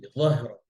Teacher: য মোটা, হা পাতলা, র আবার পাতলা